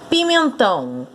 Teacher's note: Pimentão, a sílaba tônica é a última.